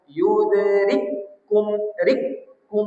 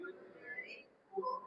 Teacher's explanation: maka kafnya langsung ditasdid ya dimasukkan. Jadi kaf pertamanya tak dibaca lagi. Jadi langsung yudrikum rikum.